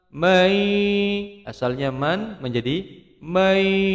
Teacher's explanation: asalnya man menjadi mayasya'u, memasukkan nun sukun pada ya, disebut dengan idgham bigunnah dua ketukan.